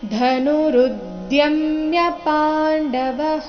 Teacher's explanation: ಧ ಮಹಾಪ್ರಾಣ ರಸ್ವ ಇದೆ